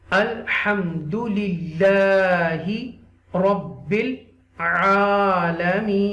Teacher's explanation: Okay, and when you stop waqfan, you will read this noon zabar na would be removed logically and put jazm sign on noon. Right, this noon zabar na would be changed into noon sakina when you stop at the end